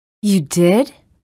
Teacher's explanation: wavering intonation the pitch changes within words